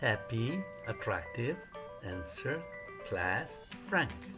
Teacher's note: Este es un sonido entre la A y la E del español, con los dientes y los labios ligeramente separados y con las comisuras extendidas.